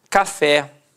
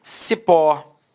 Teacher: repare que a sílaba tônica é a última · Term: oxítona